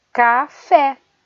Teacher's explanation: A sílaba que é pronunciada com mais força é a sílaba fé